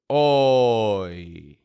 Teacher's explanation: That's the part that goes oh, nice and strong and clear, where the glide is the ye, fading off on the end.